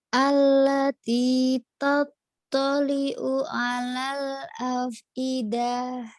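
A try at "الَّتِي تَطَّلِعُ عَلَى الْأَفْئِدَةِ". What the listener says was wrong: nanti lidahnya pendek sama ainnya ya kamu belajar ain.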